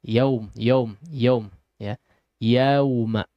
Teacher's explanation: tapi kurang sempurna fathahnya iya ya agak buru-buru masuk ke waunya